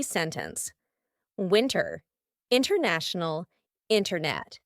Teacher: in these words the t is just gone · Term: glottal T